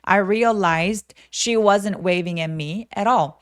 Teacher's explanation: realized 아니고 realized she 이렇게 자음하고 자음이 만났기 때문에요 d는 디귿 받침 정도로만 좀 가볍게 처리하시면 됩니다.